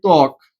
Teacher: শব্দের প্রথম বর্ণে বফলা যুক্ত হলে বয়ের উচ্চারণ অনুচ্চারিত থাকে